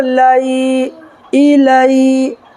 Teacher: یا ساکن سے پہلے زبر ہے تو یالین ہوگا اور اس کو نرمی کے ساتھ ادا کریں گے